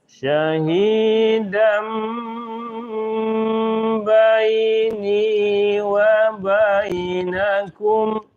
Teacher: Pertama paskan shinnya sya. Yang kedua tanwin bertemu dengan ba jadi mim ya.